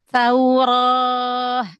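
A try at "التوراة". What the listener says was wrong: Ro-nya jangan O. Taurah. Buka aja apa namanya itu rahangnya ya. Jangan pakai O.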